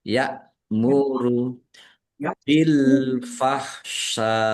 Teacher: Hamzah sukun ya. Yamuru dibaca ringan jangan keliru dengan ain sukun atau kaf sukun ya.